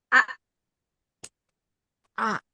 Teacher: Pada saat pengucapan huruf hamzah yang diberi tanda sukun, berhentinya suara, berhentinya nafas. A. Ya, jadi rapat ya, pita suaranya jadi tertutup rapat. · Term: hamzah sukun